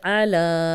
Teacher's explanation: اعلی، پڑی کھڑی حرکات اکٹھی آ گئی ہیں، زبر کو لمبا نہیں کریں گے، کھڑی زبر کو لمبا کریں گے اور عین کی کلیئر آواز نکالیں گے